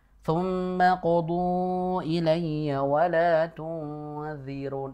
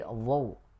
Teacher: Yang membedakan huruf dha tersebut ketika diucapkan pangkal lidah itu terangkat ya, sehingga tebal.